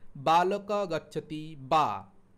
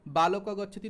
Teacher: দুটো ঠোঁট না জুড়ে তুমি উচ্চারণ করতে পারবে না, চেষ্টা করে দেখো। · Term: ওষ্ঠ বর্ণ